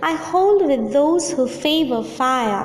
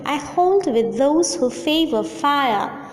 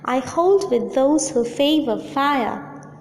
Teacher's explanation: Unstressed, stressed, unstressed, stressed, unstressed, stressed, unstressed, stressed. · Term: iambic tetrameter